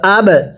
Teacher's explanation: আবা উ, কাপ মিম পেশ কুম, আবা উ কুম, ওয়াও জবর ওয়া, হামজা বা জবর আব, বায়ে কলকলা করব, ধাক্কা দিয়ে পড়ব